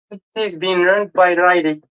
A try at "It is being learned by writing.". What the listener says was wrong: Perfect. Good.